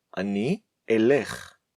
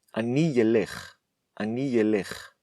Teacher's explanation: the vowel “i” at the end of the word “ani”, connects to the word elekh, causing it to sound like ‘ie’ instead of ‘e’. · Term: faulty pronunciation of the letter Aleph